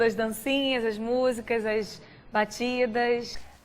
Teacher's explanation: tem momentos que os S finais ela não chia, mas tem momentos como agora ela chia o S final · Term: S chiado